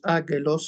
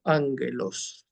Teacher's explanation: Doble gama, se pronuncia NG. No decimos ágelos, sino ángelos.